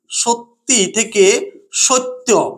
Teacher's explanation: আদিস্বরে যদি খুব প্রবল শ্বাসাঘাত পড়ে তাহলে শেষের স্বরধ্বনিটি আস্তে আস্তে লুপ্ত হয়ে যায় , একেই বলা হয় অন্তঃস্বর লোপ। তাহলে কি হচ্ছে, যদি যেমন